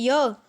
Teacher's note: जब हम य का उच्चारण करते हैं जो हमारे होंठ हैं वो दूर दूर रहते हैं